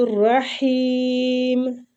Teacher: رحیم را پور پڑھیں گے